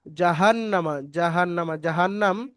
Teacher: শব্দটি পুরোটা হারাকাত চিহ্ন তাড়াতাড়ি পড়তে হবে টান দেয়া নিষেধ এবং নুনের উপরে তাজদিদ গুন্না করা ওয়াজিব এখানে ওয়াজিব গুন্না আছে খালিফ পরিমাণ নুনকে গুন্না সহ পড়তে হবে